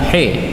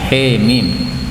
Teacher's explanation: ha ini boleh dibaca dengan imalah, bukan ha tetapi he. Nah, ini bacaan imalah namanya, he mim.